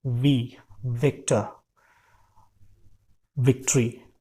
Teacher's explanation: हमको फिर से अपने ऊपर के दांतों को और नीचे के होठों को नज़दीक लाना है, एयर फ्लो को नैरो करना है, एयर फ्लो को हल्का करना है। It will be like this: वी, विक्टर, विक्ट्री।